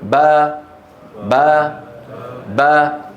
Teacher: لما يقولون با يتباعد شيئان: الشفتان والفكان. بتباعد الشفتين خرجت الباء بالتباعد، وبتباعد الفكين انفتحت الباء.